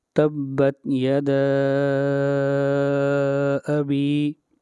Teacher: مد منفصل کو 3 الف کے برابر لمبا کرتے ہیں